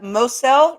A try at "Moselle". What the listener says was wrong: It is pronounced the Moselle, like a Z. The Z.